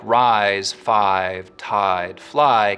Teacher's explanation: rise five tied fly keep their full eye diphthong